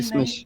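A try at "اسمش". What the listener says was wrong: ए। हाँ, पहले ई नहीं ए, एसमिश। एसमिश, और ज़बर की जगह ज़्यादा जेड, एसमिश, ई नहीं ए।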